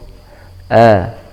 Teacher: pengucapan hamzah di awal ayat agar diucapkan dengan jelas, dengan hentakan a, meskipun tidak terlalu dihentak gitu ya.